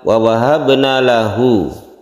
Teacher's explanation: lahu di sini panjang sebagai mad silah